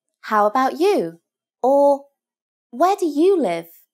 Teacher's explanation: put some stress on the you